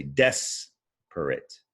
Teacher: is the stressed syllable when you read desperate you say desperate you stress that first syllable